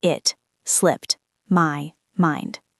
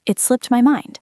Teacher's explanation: The T at the end of slipped and M at the beginning of my almost blend together. It's like one long word.